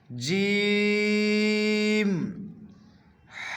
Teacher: جیم کو ادا کرنے میں زبان کا بیچ اوپر کا تالو یعنی اوپر میں جو گہرا ہے اس میں ٹچ کریں گے، اس کو زبان کے بیچ حصے کو۔